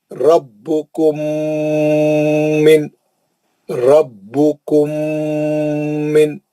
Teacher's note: را کو موٹا پڑھیں گے, با کو سختی سے پڑھیں گے